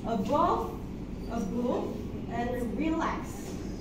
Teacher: One unstressed syllable followed by one stressed syllable.